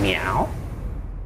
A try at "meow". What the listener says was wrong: Nope, no good. Nope, one more. It's gotta be higher pitched. I want it to sound like a real cat.